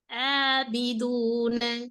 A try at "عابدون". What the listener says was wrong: இல்ல ஏண்டு வாரது பிழையே, அங்கதான் நம்மளோட பிழை இருக்குது. ஏண்டு வரக்கூடாது, நாவினுடைய பகுதியை தூக்கணுங்கிறது ஆபிதூன நாக்கு அசைது இல்லனா சொல்லி பாருங்க. ஆபிதூன அசைதா இன்னும் இன்னும் இன்னும் தூக்குப்படணும். இப்ப சரியா நாக்க ஐனுடைய இடம் எல்லாத்துக்கும் ஒரே மாதிரி உச்சரிங்க.